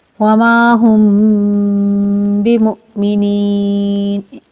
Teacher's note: تو یہاں پر غنہ ہوگا میم ساکن کے بعد با آنے کی وجہ سے۔ وما ہم بمؤمنین، رک کر غنہ کریں گے ایک الف کے برابر